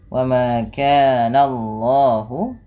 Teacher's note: Jangan menebalkan bunyi suara nanya, tapi ditebalkan bunyi Allahnya